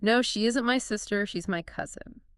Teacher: Emphasize isn't. And also cousin to stress the correct relationship.